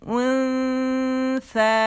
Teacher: ان باریک ہے تو باریک اخفا ہوگا، موٹا نہیں کریں گے، ٹھیک ہے، غنے کے ساتھ